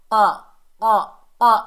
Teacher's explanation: जब ज़बान की जड़, जहाँ से हमारी ज़बान शुरू होती है, उसका एंड वाला हिस्सा, ज़बान की जड़ ऊपर नरम तालू से लगेगी तो क़ाफ अदा होगा